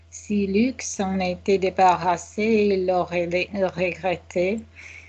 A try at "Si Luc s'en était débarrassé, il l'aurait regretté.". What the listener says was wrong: Good, okay. The mind confuses L and R. It thinks it's similar.